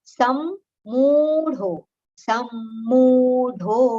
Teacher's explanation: Two similar consonants are there, so there is natural aghat on letter sa.